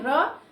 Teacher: और जब हम इसका उच्चारण करते हैं तो वायु जो होती है वो वायु जीभ से स्पर्श करती हुई लुढ़कती सी हुई बाहर निकलती है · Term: परकंपित व्यंजन